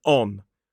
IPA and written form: ɒn (on)